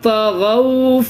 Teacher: واو مدہ کی طرح اس کو کھینچنا نہیں ہے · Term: واولین